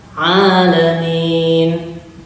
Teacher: Kalau ain itu di pertengahan tenggorokan, sama seperti ha di situ tekannya, karena satu makhraj, satu tempat, cuman beda sifat.